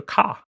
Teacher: Just drop that R, just go ka. · it's a lot simpler just drop that R you know just go car yeah save yourself a lot of